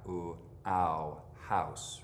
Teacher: in American English the tongue starts down in front and moves up in the back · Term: mouth diphthong